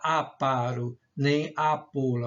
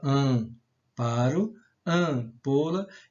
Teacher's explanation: O A sai dos pulmões pelo nariz e pela boca, né?